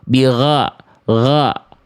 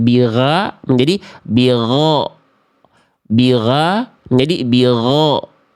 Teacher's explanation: Vokal A-nya lebih gemuk karena pangkal lidahnya naik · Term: huruf tebal